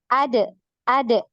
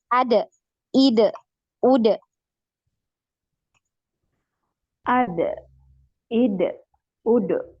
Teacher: untuk dalnya ini jangan sampai ada aliran suaranya ya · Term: Qalqalah